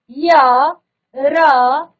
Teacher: इन व्यंजनों के उच्चारण में जीवा पूरी तरह से उच्चारण अव्ययों को स्पर्श नहीं करती है। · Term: अंतस्थ व्यंजन